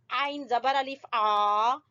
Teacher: عین کو وسط حلق سے ادا کریں گے